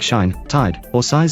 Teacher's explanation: the long I vowel in words like shine, tide, or size is a diphthong, the linguistics jargon for two vowel sounds joined in one syllable to form one speech sound, that is pronounced with the lips unrounded